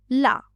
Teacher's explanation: जीहवा का अगला भाग मसूड़ों को छूता है और हवा अगल-बगल यानी पासर्व से निकलती है। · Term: पासर्विक व्यंजन, पार्श्विक व्यंजन